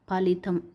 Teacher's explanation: only పెదవులతో పలుకుతాం కాబట్టి ఫలితం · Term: ఓష్ట్యం